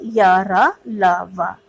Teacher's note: इन व्यंजनों के उच्चारण में जो है वायु का अवरोध कम होता है, यानी वायु कम रुकती है। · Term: अंतस्थ